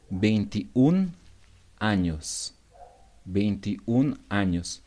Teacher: We're gonna omit the last vowel in the number 21.